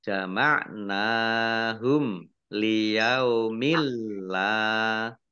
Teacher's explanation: Kaifa idza jama'nahum yaumil la raiba fihi wa Wawuf fiyat kullu kasabat Fakaifa idza jama'nahum dzal fathah alif mat tabi'i nun fathah berdiri mat tabi'i panjang 2 harokat mim sukun bertemu dengan huruf lam bacaan izhar syafawi dibaca jelas